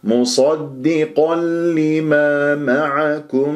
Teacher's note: إدغام بغير غنة، تنوين مع اللام آكل النون